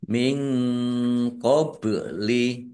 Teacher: nun sukun bertemu dengan huruf qof bacaan ikhfa dibaca samar-samar